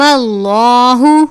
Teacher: لہن علیم اللہ عین کو باریک پڑھیں گے، لام سے پہلے زبر ہے، لام کو پر پڑھیں گے